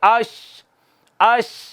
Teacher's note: زبان کا درمیانی حصہ اوپر تالو کے ساتھ لگتا ہے، صرف آواز نکلنے کی، ہوا کی تھوڑی جگہ باقی رہ جاتی ہے